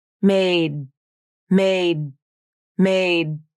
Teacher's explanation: The tongue tip came up and the sound was stopped right there. An unreleased D consonant sounds like this